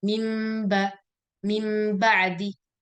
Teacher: di Syamiyah, itu bibir harus ditutup rapat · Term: hukum iqlab